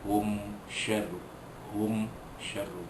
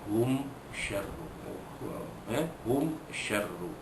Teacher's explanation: Kerana berlakunya izhar itu dengan mengetapkan kedua-dua bibir. Kerana tempat makhraj huruf mim pun memang keluar dari dua bibir. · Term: izhar syafawi